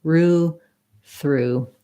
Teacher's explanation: If you have trouble with the THR combo, start with your R, roo, and then just sneak your tongue forward